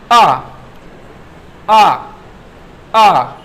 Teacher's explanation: जब आप आ को बोलेंगे तो आपकी जीभ का मध्य भाग उठेगा।